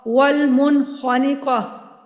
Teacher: نون ساکن کے بعد خا آ رہا ہے تو یہاں پہ بھی اظہار حلقی ہوگا